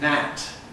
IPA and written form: næt (gnat)